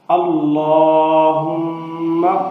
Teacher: اللہ اس کو پر پڑھنا ہے اور لمبا بھی کرنا ہے